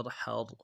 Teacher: واو نون زبر ون، حا را زبر حر، حا کو گہرائی سے ادا کریں گے، را کو موٹا کریں گے۔ حا را زبر حر، ون حر، حمزہ خا زبر اخ، موٹا کریں گے خا کو۔